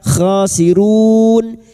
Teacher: Bertemunya mad dengan huruf hidup yang dibaca waqaf mad arid lukun. Empat harakat kita panjangkan. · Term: dua harakat